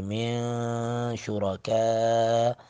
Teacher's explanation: کاف پر مد متصل 3 الف کے برابر اس کو کھینچیں گے